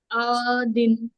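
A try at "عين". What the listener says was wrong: عین، عین حلق سے.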